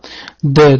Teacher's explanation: Dal harfi maxrajiga qaraymiz. Til uchi va oldingi ikki tepa tishning tubi. Bu harf jarangli undosh harf. Oʻzimizni oʻzbek tilimizdagi d harfi bilan talaffuzi toʻlamos tushadi.